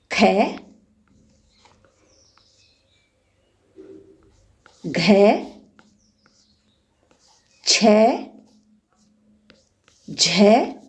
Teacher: महाप्राण व्यंजन जो है उन व्यंजनों को कहते हैं जिनके उच्चारण में सांस की मात्रा अधिक लगानी पड़ती है। और इनमें है जो वर्ग हैं 5, उन वर्गों का दूसरा और चौथा व्यंजन, जैसे ख, घ, छ, झ आदि।